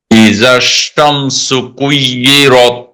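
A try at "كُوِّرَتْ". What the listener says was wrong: কুই বলে কিন্তু ইয়া হয়ে যাবে, ওয়াও উচ্চারণের সময় অবশ্যই ঠোঁট গোল হবে, যদি ঠোঁট গোল না হয় তাহলে ইয়া হয়ে যাবে।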